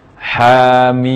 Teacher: Ha dibaca 2 harakat dan mim dibaca 6 harakat.